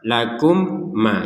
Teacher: dibaca apa dilihat yang huruf setelahnya huruf setelahnya adalah huruf mim maka didengungkan 100% karena mim yang pertama masuk kepada mim yang kedua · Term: dengung 100%